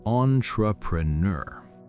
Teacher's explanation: It's a French word, so we try to pronounce it the French way. The beginning is on, like the word on, but with a nasal sound.